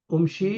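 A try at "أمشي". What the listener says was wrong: Why Umshi? Amshi. Namshi. Because Hamza and Noon should have a fatha on it. So Amshi and Namshi.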